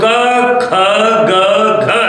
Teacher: क ख ग का उच्चारण होता है कंठ से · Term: क वर्ग